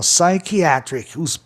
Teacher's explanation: Palavra terminada em C, o A anterior tem um som entre A e E, ó, é psychiatric.